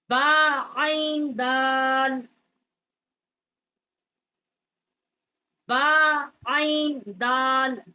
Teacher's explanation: با جو ہے ہونٹوں کی جو تری ہے وہاں سے ادا ہوتی ہے، اور عین جو ہے یہ حروف حلقی ہے، یہ واسطے حلق جو ہے وہاں سے یہ ادا ہوتی ہے.